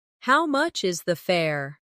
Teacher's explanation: The stress is on how much and fare.